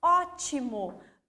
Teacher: A minha sílaba tônica é a primeira, está acentuada, a primeira aqui da palavra, mas eu vou contar lá de trás. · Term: proparoxítona